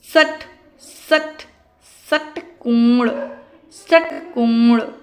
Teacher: मूर्धन्य श मूर्धन्य श मूर्धा से निकलता है।